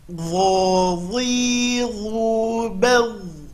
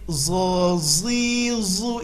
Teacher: Huruf dho sama makhraj dengan huruf dha, keluarkan ujung lidah, tapi ini huruf tebal.